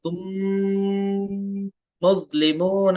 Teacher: ठीक है, यहाँ पे मैंने तुम नहीं कहा, मैंने यहाँ पे गुन्ना किया, देखिए तुम मुस्लिमून, एक अलिफ तक नाक में आवाज रखनी है